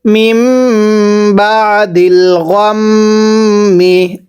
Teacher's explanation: মিমে যদি তাসদিদ হয় গুনাহ করে পড়তে হয়